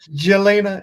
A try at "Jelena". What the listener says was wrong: It's actually pronounced Yelena. The J is a Y.